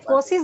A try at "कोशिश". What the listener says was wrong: एक मिनट, अभी आपने ऐसे कोशिश बोला, आप इसको श बोलो,